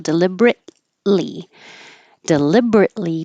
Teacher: you hold the t and you don't release the air flow T so you just go from the T to the L